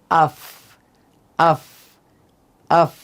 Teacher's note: 14 নম্বর মাখরাজ ফা, নিচের ঠোঁটের পেট সামনের উপরের 2 দাঁতের আগার সাথে লাগিয়ে উচ্চারিত হয়